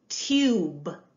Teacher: tube sometimes with the long you it sounds a little bit more like an O sound